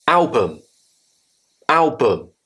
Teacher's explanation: The U becomes a schwa sound.